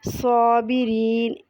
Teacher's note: اس میں صاد مفخم ہے، اس لیے الف بھی موٹا۔